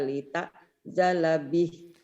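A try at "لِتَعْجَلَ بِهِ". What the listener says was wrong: kurangnya ainnya tuh lita gitu. Lita, jangan Nita, jangan tanya mah jangan Lita, Lita. Oh mama dari tanya dulu, tanya mah jangan diainin. Lita, Lita, Lita.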